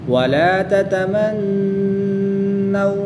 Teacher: نون مشدد میں غنہ کر کے پڑھیں گے. واو ساکن سے پہلے نون مشدد پر زبر ہے تو واو لین ہوگا، بغیر کھینچے نرمی سے ادا کریں گے